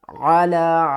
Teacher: علا چھوٹی مد ہے، 3 الف کی مقدار کھینچ کر پڑھیں گے، یا کو ہم نے نہیں پڑھنا۔